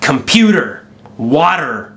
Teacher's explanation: we Americans we like to pronounce our R's quite strongly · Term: American R